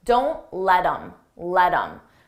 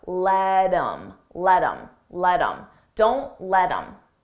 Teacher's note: I take that H off of him, I drop the sound, and then I'm left with im, but I combine it with the word before